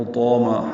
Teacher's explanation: ہا وسط حلق سے ادا کریں گے، تو پر الف مدہ ہے، 2 حرکات لمبا ہے۔